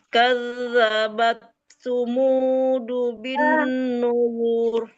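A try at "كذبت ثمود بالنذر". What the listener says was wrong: Samu bukan sumu. Samu. Coba lagi.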